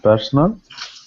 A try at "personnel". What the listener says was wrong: Be careful of the pronunciation. You don't want to confuse it with personal. I have a personal problem. Personal. So this is personnel. Very strong accent or stress on this part. Personnel.